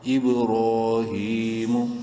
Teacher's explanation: را کھڑی زبر کی وجہ سے بولڈ بھی ہوگی اور ایک الف برابر لمبا بھی کریں گے ، ہا کھڑی زیر کی وجہ سے ایک الف برابر لمبی · با حروف قلقلہ میں سے ہے، قلقلہ کریں گے ساکن ہونے کی وجہ سے